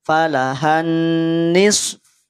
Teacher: Rahang ketika masuk pada huruf fa tidak berada pada rahang yang tebal. Karena fa termasuk di antara huruf yang tipis.